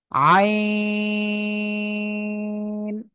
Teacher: গলা চেপে উচ্চারণ করতে হবে, 3 আলিফ না 4 আলিফ। · 4 আলিফ টেনে পড়তে হবে।